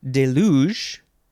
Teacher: you emphasize the second um uh second syllable